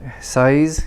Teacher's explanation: just an s with voicing there's no the tongue doesn't touch it's just a z which is just an s with the voicing the vibration down here